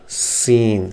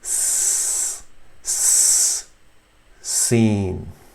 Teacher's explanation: But in seen, you say, you keep your teeth together, clenched together, seen, and a whistling sound will come out. So in this diagram, these front teeth will join, and you just say s, seen.